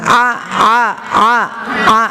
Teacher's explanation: Ain itu kan tadi makhrajnya bukan dari khaysum. Ya, bukan dari khaysum, tapi tengah tenggorokan